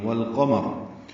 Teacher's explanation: لام ساکن پہ اظہار قمری ہے، آگے قاف حروف قمری میں سے آنے کی وجہ سے اب لام پڑھا جا رہا ہے. اگر رکنا ہے وقف کرنا ہے تو والقمر پھر را پر ہے، ملانا ہو تو پھر تب بھی را پر ہے، لیکن پھر حرکت ضمہ پڑھیں گے، را مضموم ہے.